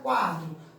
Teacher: paroxítona porque é a penúltima sílaba